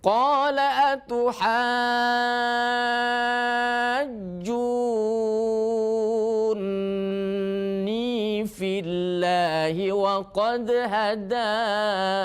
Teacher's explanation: Itu ya, masuk dulu ha 6, masuk ke jim haj, disidahkan dulu, ditahan dulu suaranya, jangan haju tapi haju ya, berhenti dulu sini ya. Ju panjangkan 6, baru masuk ke huruf nun. Junni. Nya 2 harokat lagi. · Namanya nun musyaddada tajibul gunnah. Nun yang bertasydid wajib dibaca gunnah, artinya dengung. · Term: mad lazim kilmi mutsaqal